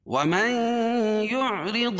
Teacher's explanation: نون ساکن کے بعد ادغام مع الغنہ کے 4 حرفوں میں سے یا ہے تو یہاں غنہ کر کے پڑھیں گے